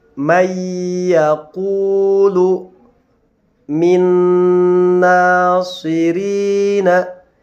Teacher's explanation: cara membacanya adalah memasukkan bunyi nun sukun ke dalam huruf ya serta disertai dengan dengung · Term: idgham bi gunnah